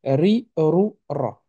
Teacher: Ri, rou, ra. OK? C'est vraiment un R roulé.